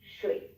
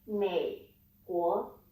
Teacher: The secret is you don't need to do the falling and rising thing. Instead, you just keep it low. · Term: third tone